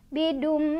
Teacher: Jadi enggak dibaca bidun lagi, melainkan langsung masuk ke mim ya. Sambil berdengung ya. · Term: idgham bi gunnah